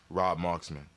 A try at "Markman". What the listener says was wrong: It's Markman, not Marksman.